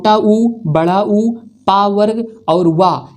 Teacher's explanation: ओष्ठ में छोटा ऊ, बड़ा ऊ, पा वर्ग और वा, इनका उच्चारण ओष्ठ से होता है।